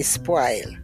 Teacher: we do not use the rounded vowels in Jamaica they're all broad a vowels